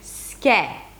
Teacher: an S sound that shifts to K, and then you open it to the EH as in 'red'.